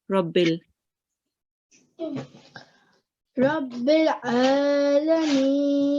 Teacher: you tried to read the ayn from your throat